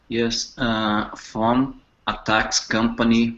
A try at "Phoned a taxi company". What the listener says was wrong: By the way, don't drop the E in taxi. Phoned a taxi company.